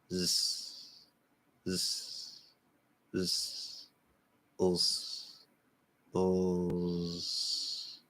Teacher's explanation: In the partial end of word devoicing, of course, we're inverting that. You want a little bit of that Z, and then it can change to an S.